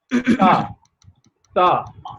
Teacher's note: Take the tip of your tongue to the upper teeth. Tip of the tongue to the upper teeth and pronounce it Sa.